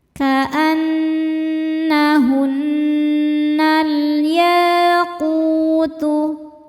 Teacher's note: Sebab alif lam menghadapi huruf qamariah yaitu ya. Cara bacanya lam sukun dibaca izhar atau jelas. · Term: alif lam qamariah